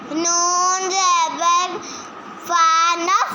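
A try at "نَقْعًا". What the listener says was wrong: ये फा नहीं है, फा का एक नुक्ता होता है, ये दो नुक्ते हैं।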